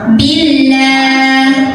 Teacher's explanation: alif lam ini tidak dibaca dari bi langsung tekan ke lamnya. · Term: alif lam syamsiah